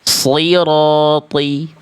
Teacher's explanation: pastikan angkat pangkal lidahnya biar bunyinya tebalnya maksimal. Sirati, dan memang di sini semuanya huruf tebal dibaca.